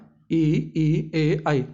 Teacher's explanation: जीभ के अगले हिस्से का प्रयोग करते हैं, उसे हम अग्र स्वर कहते हैं